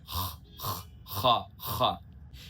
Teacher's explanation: epiglottis से बोलना है दोस्तों ये हलक से